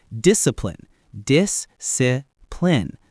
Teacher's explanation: Stress on that first syllable. Dis.